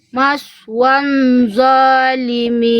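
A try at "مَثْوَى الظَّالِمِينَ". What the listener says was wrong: Jangan ada bunyi nun bunda. Lihat setelah wawu langsung nempel kemana lidah saya. Maswadzolimin. Nggak ada bunyi nun, nggak, bukan maswan, nggak ada en. Maswadzolimin. Jangan ada nun. Tidak ada nun bunda, tidak ada bunyi nun, nggak ada bunyi en, nggak ada en, lidahnya langsung nempel ke ujung gigi seri atas. Maswadz, langsung wa, nggak ada wa en.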